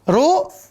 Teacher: Ru, kelompok ke-5, ya. Ujung lidah, langit-langit belakang.